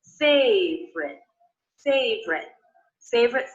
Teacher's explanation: I noticed that I'm dropping little unstressed syllable in favorite